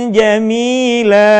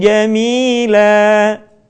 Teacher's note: nun mati bertemu dengan ja [Musik] perhatikan sekali lagi Jil ingat ditahan suaranya kemudian posisi lidah kita sudah berada pada huruf ja